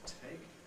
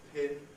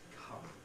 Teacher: they tend not to aspirate in English which is part of what we hear as an Indian accent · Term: aspiration